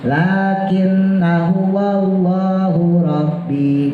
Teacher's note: Kalau kita wasal lakinna ya udah kita pendekin